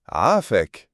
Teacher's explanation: c'est le son qui vient du fond de la gorge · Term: son guttural